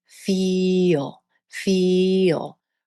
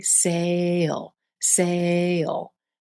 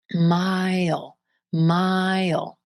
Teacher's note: Notice how these words almost sound like they're two syllables or two beats with a little y or y sound connecting the sounds. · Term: final L